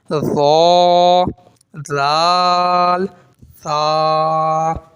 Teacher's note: اور اب اس والے میں آپ کیا کریں گے کہ زبان یہ دانتوں کے بالکل نیچے والے حصے پہ لگائیں گے جہاں دانت آپ کے ختم ہوتے ہیں، وہاں ٹچ کریں گے زبان کو تو یہ ادا ہوں گے